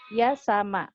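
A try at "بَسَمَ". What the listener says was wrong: Bukan, titiknya satu. Basama.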